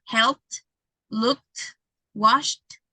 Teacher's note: you don't feel vibration at the end. So it means that the pronunciation is in past, it's with letter T. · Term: T sound